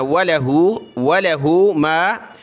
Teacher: इसको खींचना नहीं, वला नहीं पढ़ना